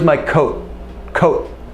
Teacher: a stop T perhaps at the end of a phrase